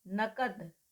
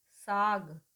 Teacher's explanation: जो अघोष ध्वनि थी उसको हमने सघोष ध्वनि बना दिया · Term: घोषत्व